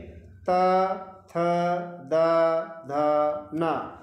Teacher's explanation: थ द ध न तो त वर्ग के जो व्यंजन है इनके बोलने में हमारी जो टंग है जो जीभ है वह हमारे दांतों को टच करती है और इसके बाद ध्वनि को रिलीज करती है इसलिए त वर्ग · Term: दंत्य